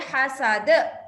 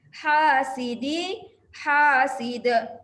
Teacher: Qalqalah kubra pada da, ha itu mad asli ya.